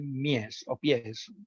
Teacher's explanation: Se trata de un fonema alveolar, fricativo y además sordo.